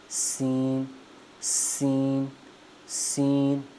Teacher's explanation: سین کو پڑھتے وقت آپ کے جو دونوں دانت ہیں یہ بھی آپس میں مل جاتے ہیں، اور جو آپ کی زبان ہے وہ نیچے والے دانتوں کے جڑوں کے ساتھ لگتا ہے